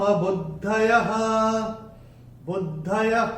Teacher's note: ऐसे ही न के ऊपर जो अनुस्वार है वो चरण की समाप्ति पे है, चरण की समाप्ति पे अनुस्वार आएगा तो उसका उच्चारण केवल और केवल म ही होगा। दूसरे चरण की समाप्ति पे विसर्ग जो आ रहा है चरण की समाप्ति पे है तो इसका उच्चारण केवल और केवल ह ही होगा